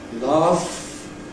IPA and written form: lɑːf (laugh)